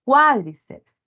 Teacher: ahí está la sílaba tónica en cua en la antepenúltima es una esdrújula cuádriceps Entonces se tildado sobre la vocal abierta y se mantiene